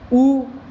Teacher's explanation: देखो ऊ बोलोगे तो आपके दोनों होठ सिकुड़ रहे हैं, बिना होठों के आप ऊ बोल ही नहीं पाओगे। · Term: ओष्ठ